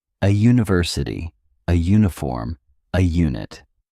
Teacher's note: the U makes a J sound like the Y in U which is a consonant sound